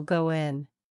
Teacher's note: when a word ends with a vowel o and is followed by a word that begins with a vowel sound the words are linked with a W sound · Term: wa sound